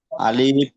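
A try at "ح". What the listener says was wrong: আলিফ নয়, হা।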